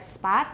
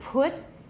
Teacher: All we have is voiceless, and they're not the same thing. So like spot, the P is voiceless, but put, it's voiceless and aspirated.